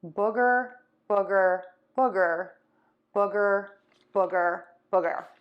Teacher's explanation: for the uh my lips are rounded but they're more relaxed my tongue is more relaxed and my cheeks are more relaxed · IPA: /ˈbʊɡər/